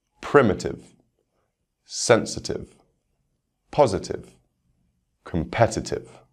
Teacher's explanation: For these words, the stress will be on the third syllable from the end.